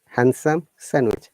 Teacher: handsome no d sound in both these two words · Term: d is silent, d silent